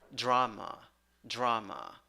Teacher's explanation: 8, 5 letters, 5 sounds, 2 syllables. The first syllable is the stressed syllable. You have ah, ah. And in the second syllable, you have schwa, drama, drama.